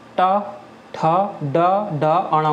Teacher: जिनको बोलने में जीभ का उल्टा भाग तालु को स्पर्श करता है। जो जीभ है ना उसका पीछे वाला भाग तालु को स्पर्श करेगा। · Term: मूर्धन्य व्यंजन